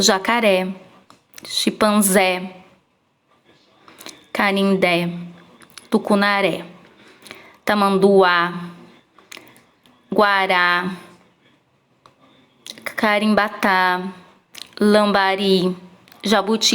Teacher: Porque a última sílaba é a mais forte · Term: oxítonas